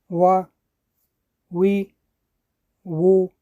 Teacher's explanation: Следующая буква – это буква Вау. Вау образуется между вытянутыми передними губами.